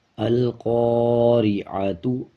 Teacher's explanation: جب زبر کے بعد الف آ جائے یعنی الف سے پہلے والا جو الفاظ ہے اس کے اوپر زبر آ جائے اور اس کے بعد الف آ رہا ہو زبر کے بعد، تب 1 سیکنڈ لمبا کر کے پڑھا جائے گا۔ اب جیسے قاف کے اوپر زبر ہے اور زبر کے بعد الف ہے، 1 سیکنڈ لمبا کر کے پڑھا جائے گا